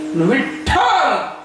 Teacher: पहिला वर्ण हा अल्प प्राण आहे, शेवटचा वर्ण हा अल्प प्राण आहे, आणि मधला वर्ण हा महाप्राण आहे. म्हणजे ज्याच्यात हकाराचं प्राबल्य आहे.